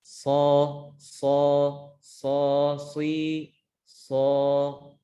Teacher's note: dengan cara kita menebalkannya adalah dengan menaikkan pangkal lidah ke langit-langit. Contohnya so, si, so, bukan so. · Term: huruf shad